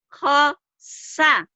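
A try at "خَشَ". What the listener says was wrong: khosya. Belum ya. Shinnya ya hutang shin. Khosya.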